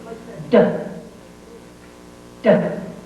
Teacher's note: The tongue again touches the ridge behind your teeth. There is pressure, and then the tongue pops the sound out. · D is a sound that has a tone. You should feel vibration in your throat. The tongue again touches the ridge behind your teeth.